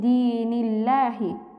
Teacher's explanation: আল্লাহ শব্দের ডানে জের হওয়ার কারণে আমরা এখানে আল্লাহ শব্দকে বারিক বা পাতলা করে পড়ব। পাশাপাশি খাড়া জবর হওয়ার কারণে আমরা এক আলিফ টান দিয়ে পড়ব।